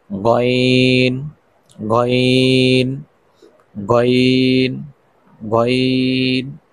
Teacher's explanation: হলকের শেষ ভাগ থেকে গইন